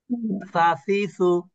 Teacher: সা উচ্চারণ হচ্ছে জিহ্বার আগা, উপরের দাঁতের আগা।